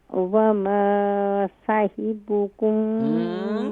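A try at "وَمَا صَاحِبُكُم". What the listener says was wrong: اماں جی صاد کو کیسے ادا کریں گے؟ صاد کو مزید فل ماؤتھ کیجئے. حاضر ہی شارٹ ساؤنڈ.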